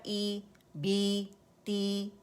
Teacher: آواز نیچے جاتی ہے اور ہلکا سا درمیان سے ہماری جو زبان ہے وہ ریز ہوتی ہے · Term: کسرہ